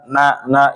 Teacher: itu ada gunahnya keluarnya dari hidung tapi dia tidak terlalu terasa